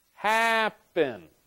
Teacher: the stress is on the first syllable happen